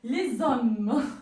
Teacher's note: Et là, les étoiles, et on prononce les étoiles, les zé. Alors le z fait partie en fait de la première syllabe du deuxième mot. · Alors les hommes, voilà, donc il y a un z qu'on entend.